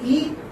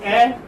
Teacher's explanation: For instance, when you say E, it is closed, and when you say A, it's open.